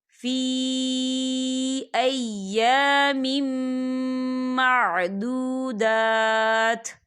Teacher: وَاذْكُرُوا اللَّهَ فِي أَيَّامٍ، دیکھیں فی یہاں پر یا مدہ ہو رہا ہے، یا ساکن سے پہلے زیر ہے اور اس پہ مد بھی ہے، تو ہم اسے 4 حرکت کے برابر کھینچیں گے